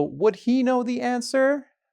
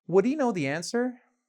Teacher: You're basically cutting off the h when you have he with the modal in this case. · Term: reduced pronunciation